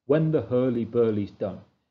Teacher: You can see in that line we've got when is stressed, the is unstressed